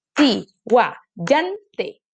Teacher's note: La penúltima, yan, sería nuestra sílaba tónica